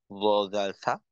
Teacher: জিহ্বার আগা সামনের উপরের দুই দাঁতের আগার সঙ্গে লাগাইয়া ল জাল সা। তো এক্ষেত্রে ল উচ্চারণ করার সময় জিহ্বার আগা দাঁতের আগা একেবারেই একই পয়েন্টে থাকবে।